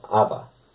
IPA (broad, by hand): ävä